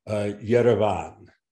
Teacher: The V sound it's between the lips, so it's similar to the Georgian V.